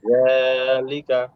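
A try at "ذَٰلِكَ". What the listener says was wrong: হ্যাঁ, এটা নরম ভাই, যালিকা কি নরম হবে।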